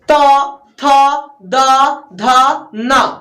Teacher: तो ये हो गया दंतस्थ, मतलब दांत में सट करके आवाज आ रहा है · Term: दंतस्थ व्यंजन